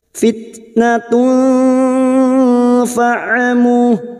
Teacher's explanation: kita samarkan bunyi duma tanwin pada huruf tak marbuta ini, kita samarkan dan mendengung selama 3 harokat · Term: ikfa hakiki